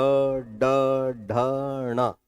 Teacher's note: ऊंचाई पर जहां तक आप ले जा सकते हैं अपने जीवा को फिर वहां से ट, ठ, ड बोलते हैं तो वह मूर्धा का स्थान है